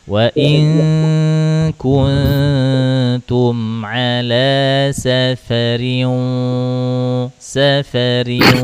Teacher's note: Ayo idgam gunuhnya tahan yang lebih lama